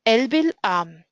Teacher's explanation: So the first word here, el, doesn't have any stress marker, so it doesn't have a stress. The first stress is on the syllable am.